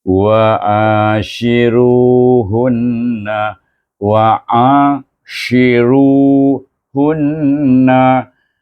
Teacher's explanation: Kemudian shi, tafashi bunyinya berembusan, ya.